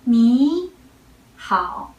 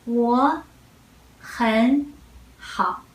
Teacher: the first two third tone, we all read them as second tone. Only the last third tone, we keep it.